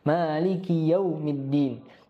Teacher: Pada kata maliki kita harus hati-hati untuk tidak memanjangkan ki.